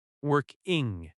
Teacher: Working has stress on work.